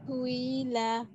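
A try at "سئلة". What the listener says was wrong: সুই হামজাজের ই শক্ত হবে সুইলা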